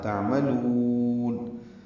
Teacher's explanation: میم کو جلدی ادا کریں گے، لام کو لمبا کریں گے